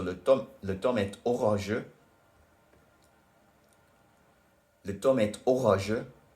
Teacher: the reason the T becomes pronounced in et is because orageux starts with a vowel